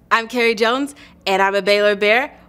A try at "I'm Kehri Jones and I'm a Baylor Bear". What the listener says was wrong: Cool, let's do that one more time and just a little more emphasis on Baylor Bear. So